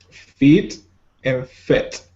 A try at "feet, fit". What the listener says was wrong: And try to keep your mouth just a little bit more closed on these words. But now it sounds kind of like a S sound, like in bed or said.